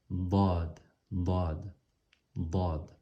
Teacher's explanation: Ce n'est pas le D qu'on connaît en français, c'est un D qui est beaucoup plus emphasé. Donc, pour pouvoir le prononcer, une façon de le faire, c'est de coller les dents, de coller la langue sur très près du palais, mais de coller la langue d'un côté des molaires du haut.